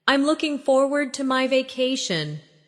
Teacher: Notice the smooth connection between looking and forward.